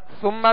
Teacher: سا کو نرمی کے ساتھ ادا کرنا ہے، باریک پڑھنا ہے